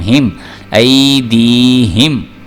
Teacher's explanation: ہا جو ہے یہ حروف حلقے میں سے آ گیا، اس کو موٹا کر کے پڑھنا ہے۔ ای دی، ہا زیر میم ہم ایدیہم۔